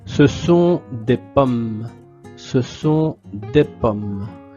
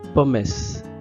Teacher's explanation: la E comme dans orange, ne se prononce pas à la fin